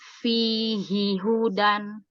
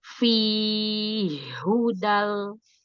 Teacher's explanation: kalau di riwayat Hafs yang sekarang kita pelajari, ini dibaca izhar. Fihi hudan. Tapi kalau di riwayat Abu Amr, maka ini dibacanya idgham.